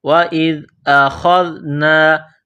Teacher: خا کو موٹا کرنا ہے، زال کو نرم کرنا ہے، خا کو زال کے ساتھ پلس کرنا ہے۔